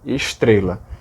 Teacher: Então o S arqueia, para depois dar uma batidinha e fazer o T.